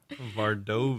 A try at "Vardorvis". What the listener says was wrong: Vardorvis. There's an extra R. Vardorvis. Vardovis. Vardorvis.